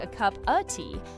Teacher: The A's become This is why a cup of tea sounds like a cup of tea. The of lost its vowel completely. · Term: connected speech